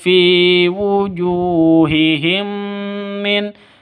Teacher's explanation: Fi wujuhihim min, mim mati bertemu dengan mim. Nah, ini disebut dengan idgham mimi atau idgham mislain, karena sama, mim mati bertemu dengan mim.